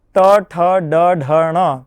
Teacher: તાળવાની પાછળનો જે માર્ગ છે એ માર્ગને આપણે મૂર્ધા તરીકે ગણીએ છીએ